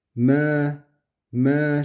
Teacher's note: Ma yapmayın. Yani kalın okumayın ma diye. Yani a sesini vermeyin. E sesini vererekten me me şeklinde. Yani ma duyulmasın.